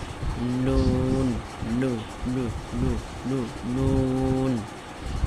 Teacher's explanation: তারপর হলো নুন, জিহ্বার আগা বরাবর মানে উপরে তালুর সঙ্গে লাগাইতে হবে